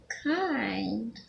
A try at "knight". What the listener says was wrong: That one actually is a silent K. Night.